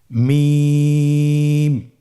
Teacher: হরফটি উচ্চারিত হয় দুই ঠোট চেপে ধরে আমরা উচ্চারণ করব